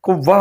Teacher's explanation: کو وقف کی حالت میں ہم نے قوہ بنا دینا ہے، تا کو ہم نے ہا کی شکل میں بنا دینا ہے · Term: گول تا